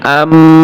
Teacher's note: দুই ঠোঁট মিলিয়ে গুণ হবে